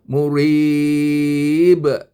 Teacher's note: ini adalah mad arid lukun yang biasanya saya baca empat harakat iaitu murib seterusnya wassama Buruj ada je dia kan.